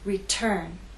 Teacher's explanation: Return has two syllables, but it's the second syllable that is stressed. T is at the start of that syllable, so we say return.